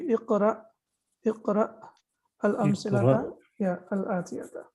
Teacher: Now you see here, this is also a different kind of verb, and the ending is sakin when there is a hamza, hamza sakina, or so it will be recited or it will be read with a small glottal stop